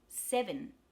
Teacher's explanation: the first is stressed se that's the short e sound and the second e becomes a schwa